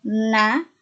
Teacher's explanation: kerja sama antara ujung lidah dengan gigi atas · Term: konsonan apikodental